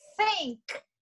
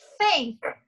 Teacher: Então, é o dente, ó, e a língua reta, como se fosse um sanduíche. Os dentes e a língua reta, e no meio entre a língua e o dente tem que soprar, sai um sopro, tá? Então, ó, think.